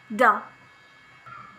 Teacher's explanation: voiced alveolar stop sound da